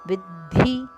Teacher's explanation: ವಿದ್ಧಿ ದಕೆ ಮಹಾಪ್ರಾಣದ ಒತ್ತು